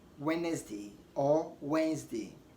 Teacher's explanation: the D is silent so you don't say wet next day rather you want to say Wednesday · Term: Silent d